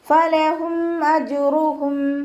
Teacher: മീം സാക്കിനയ്ക്ക് ശേഷം ബാഉം മീമും അല്ലാത്ത ഏതൊരക്ഷരം വന്നു കഴിഞ്ഞാലും മീം സാക്കിനയെ വ്യക്തമാക്കി മണിക്കാതെ ഉച്ചരിക്കുക കേട്ടോ. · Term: ഇവ്ഹാർ ഷഫവി